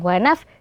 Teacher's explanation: dibaca wanafsin akan tetapi dibaca wanafsiw dan jangan lupa disertai dengan ghunah yaitu suara yang mengalir dari rongga hidung wanafs jadi terasa ya ketika hidung dipencet itu akan ada wanafsi · gunnah, yaitu suara yang mengalir dari rongga hidung.